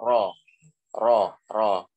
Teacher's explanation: Jadi lebih masuk dikit dibandingkan dengan tempat keluarnya huruf nun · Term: huruf ro